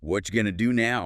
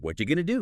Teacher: Right. And going to, of course, became gonna.